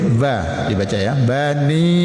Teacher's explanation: Ba itu juga huruf antara dua bibir.